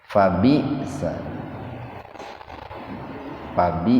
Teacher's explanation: Jadi bunyi lan diganti dengan panjang, la qalila, fabisa, fabi, nah itu hamzah gelatoh, hamzah yang sukun di tengah-tengah kata. Jadi membacanya tidak panjang, tidak mad, tapi dihentakkan.